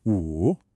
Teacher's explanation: My voice starts high, it dips down, and then it comes right back up. · Now, this tone is what we call a falling, then rising tone.